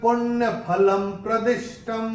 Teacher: अनुस्वार के बाद जब प आएगा तो अनुस्वार का उच्चारण होगा म